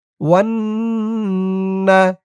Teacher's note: ওয়াও নুন জবর ওয়ান, ওয়ান গুন্না হবে, ওয়াজিব গুন্না। হরকতের পরে নুনের উপর তাসদিদ। ওয়াও নুন জবর ওয়ান, নুন জবর না, ওয়ান না।